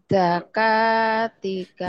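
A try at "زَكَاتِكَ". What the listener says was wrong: zanya agak rapuh. Z. Za. Zakatika. Ya, rapuh ya ini. Zaitun. Zainab. Rapuh. Rapuhin ya. Zakatika. Zakatika.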